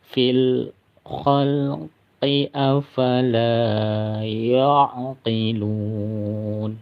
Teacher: kalau bacanya dilanjutkan qalqalahnya tidak terbaca ya karena tidak berhenti